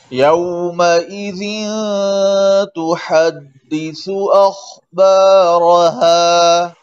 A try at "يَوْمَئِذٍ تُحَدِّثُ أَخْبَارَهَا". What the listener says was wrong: अखबारहा रा का भी मोटा पड़े